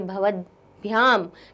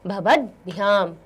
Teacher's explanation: ये जो त है वो आगे आने वाले भ के योग से यहाँ जशत्व संधि का नियम लग जाएगा और ये त हमारा दा में परिवर्तित हो जाएगा